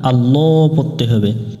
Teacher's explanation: অর্থাৎ লাম অক্ষরটাকে মোটা করে পড়তে হবে